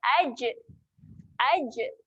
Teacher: Jim mati, sifat dia ada lantun, terhasilnya lantunan.